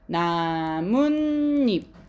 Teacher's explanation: 원래는 없었던 니은이 두 개가 생겼네 · 발음하면 니은 소리가 새로 생겨야 된대